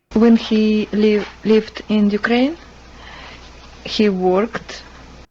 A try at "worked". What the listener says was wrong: Okay, her pronunciation of worked, we would say even though it's spelled with an O-R, we say worked. She's pronouncing it more as it's spelled with an O-R, worked. And so it's a very different vowel pronunciation.